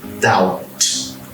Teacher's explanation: Então você vai pronunciar tudo menos o B